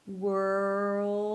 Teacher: You need that extra sound of the dark 'L' that will transition from the 'R' to the 'L'.